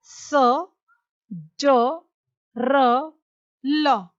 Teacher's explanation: वत्स्य, यानी जो दांतों के मूल से निकलते हैं